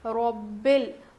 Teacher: اور را کو موٹا پڑھیں گے